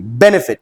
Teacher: the first syllable is being stressed and that is why the last consonant is not being doubled.